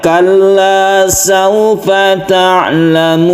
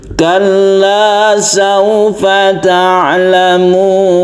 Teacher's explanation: Jadi dilenggak-lenggokkan supaya nadanya itu berbeda ya dengan yang lurus. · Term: cengkok